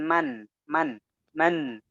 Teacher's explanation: ada suara ke rongga hidung yang harus muncul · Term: suara sengau